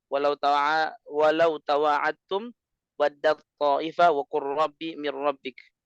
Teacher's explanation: idgham yang tanpa gunnah